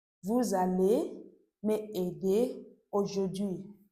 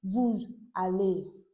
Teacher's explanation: Okay, that's why I'm pronouncing it vous aller. That S consonant sound is pronounced as z. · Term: liaison